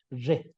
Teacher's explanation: No es re del el español, sino tiene que ser un sonido más como suena re, así un sonido más arrastrado, digamos, no tanto como sonaría la doble R en el español, re, porque también, esto es un digrama también, y se emite con una sola emisión de voz, como ya venimos diciendo también, es re, esta letra, esta consonante.